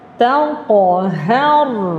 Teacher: Harfu ta nipis. Huruf qaf tebal.